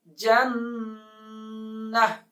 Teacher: وقف کی صورت میں تا ہا میں کنورٹ ہو جائے گا. جنہ ہا کی آواز آئے گی جب وقف کریں گے